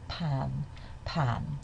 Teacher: It doesn't start with nasalization but slowly slowly the um the veum opens and we end up with a vowel with nasalized voice quality